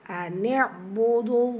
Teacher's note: அல்லாஹ்ங்கிற அந்த லாமுக்கு முன்னாடி இருக்கிறது தும்மா. ஸோ இந்த அல்லாஹ் நீங்கள் அந்த லாமை ஹெவியாக ஓதணும், வல்லினப்படுத்தி.